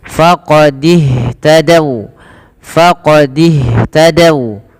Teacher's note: Kemudian pada lafal faqadih tadau, ini hati-hati teman-teman, jangan membaca faqadiuh tadau, ini tanda ini tidak dibaca alifnya dan dia langsung disegerakan kepada huruf setelahnya, yaitu kepada huruf ha. Maka dan ha alirkan nafasnya karena sifat hamas